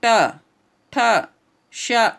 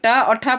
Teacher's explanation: ट और ठ पढ़ेंगे तो आपकी जीभ ऑलरेडी मुड़ करके और ऊपर की ओर जाती है, इसलिए इसको मूर्धन्य बोलते हैं ना।